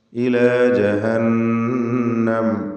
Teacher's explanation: നൂൻ മുഷദ്ദദയെ മണിച്ചുകൊണ്ട് ഉച്ചരിക്കണം.